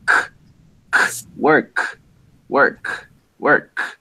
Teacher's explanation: That K sound does not make your vocal cords vibrate, so it is voiceless.